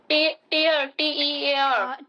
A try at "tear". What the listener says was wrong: टीयर नहीं होता है, इसे टेयर बोलते हैं। टेयर, टीयर माने आंसू होता है। अच्छा, सेम स्पेलिंग होती है।